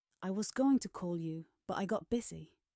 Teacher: The words going, call, got, and busy are stronger. The small words move quickly.